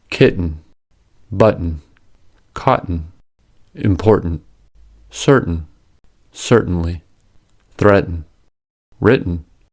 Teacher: When the syllabic un follows t consonant, the consonant becomes a glottal stop. That is, ta should be pronounced as its allophone, the glottal stop.